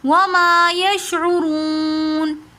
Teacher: وما یشعرون وما میں میم کے ساتھ جو الف ہے یہ الف مدہ ہے تو اس لیے ہم اس کو کھینچ کر پڑھ رہے ہیں وما. یشعرون میں واو مدہ اور اس کے بعد نون ساکن آ رہا ہے تو اس لیے ہم نے یشعرون کھینچ کر پڑھا